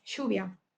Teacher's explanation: una pronunciación particular de L, Y, bueno, doble L e Y que suenan como sh o ZH